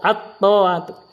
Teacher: Cirinya itu ada tasdid at-ta'ah. Jadi lamnya masuk terhadap to. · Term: lam syamsiah